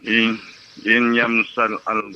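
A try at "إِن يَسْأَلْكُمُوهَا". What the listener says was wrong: Bukan im ya, i.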